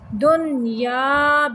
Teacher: دن پہ نون کو صرف ظاہر کرنا ہے